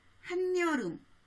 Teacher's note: 이 첨가가 왜 일어날까 생각해보면 예를 들어 한여름이란 말을 보면 원래대로 발음하면 연음이 일어나서 한여름 이렇게 되는데 니은 첨가가 일어나면 연음되지 않고 한여름 이렇게 발음이 분명해지거든요. 그러니까 형태소 결합 때 발음을 분명히 하여 뜻을 좀 더 명료하게 전달할 수 있기 때문에 나타난 현상인 거죠.